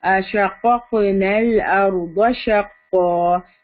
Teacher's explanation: back of the ٹنگ کو ایلیویٹ کریں گے قاف کو ہیوی کرنے کے لیے